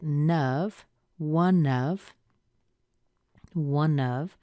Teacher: We have the N before the of. You can push that N into the vowel after it